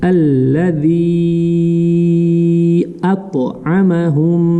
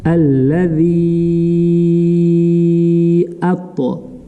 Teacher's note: даль межзубная, касру тянем 6 раз. Аллади атто.